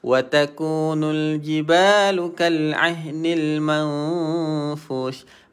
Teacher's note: mesti dia akan berakhir pada bunyi angin sebab huruf shin dia tafashi. Tafashi dia banyak huruf angin. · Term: Tafashi huruf shin